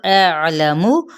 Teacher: ان حرکات کو لمبا نہیں کریں گے، نہ ہی لام کی زبر کو اور میم کی پیش کو